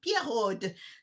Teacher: I'm going to do my pretentious French rolled R.